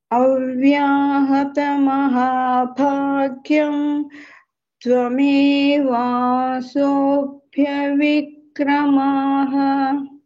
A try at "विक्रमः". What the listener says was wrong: There is no dirghakshara. All are hrasva letters. Vikramaha. It is not vikramaha. Vikramaha.